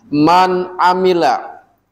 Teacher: setiap ada nun mati bertemu ain dibacanya jelas nun matinya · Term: izhar hakiki